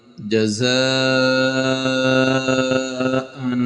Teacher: اوپر دو زبر ہیں اور دو زبر کو ہم نے اس کے بارے ہم نے تختی نمبر 5 میں پڑھا تھا تنوین، اس پہ غنہ ہوتا ہے، غنے کی آواز ناک سے نکلتی ہے